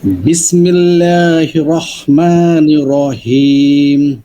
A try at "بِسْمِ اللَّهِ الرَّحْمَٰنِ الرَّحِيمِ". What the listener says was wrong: বিসমিল্লাহির হির আমি অনেক দিন যাবত আপনাকে বলতেছি, দেখেন হির হির এটা যে ধরছেন এটা মোটা করে ধরবেন, মানে একদম ধরার মতন। বিসমিল্লাহ।